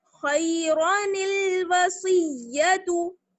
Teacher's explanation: واو زبر وا، صاد یا زیر سی، وسی یا زبر یا، وسیہ تا پشتو، وسیدو، خیرانل وسیدو، خیرانل وسیدو. تشدید پر جمائیں گے اور خا کو موٹا پڑھیں گے اور وا کو موٹا پڑھیں گے